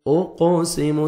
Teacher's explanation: فلا قاف حروف قلقلہ میں سے ہے، ڈبل ساؤنڈ آئے گا۔ اوقسم سین کو سیٹی سے ادا کرنا ہے تاکہ صاد نہیں ہو اور ثا میں ساؤنڈ مکس نہیں ہونا چاہیے۔